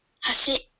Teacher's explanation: This word has an accent on the second mora. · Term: pitch accent